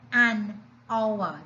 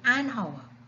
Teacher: The H is silent. We are not hearing the H, but we are hearing the letter O.